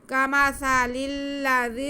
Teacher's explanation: زال نرمی سے سیٹی کی آواز بالکل نہیں آئے گی، سین میں سیٹی کی آواز آئے گی۔ کمثل الذی، زال میں سیٹی کی آواز نہیں آئے گی، سین میں آئے گی